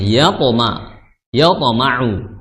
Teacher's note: dia mantul, jangan disengaja bunyikan to malah, tapi dipantulkan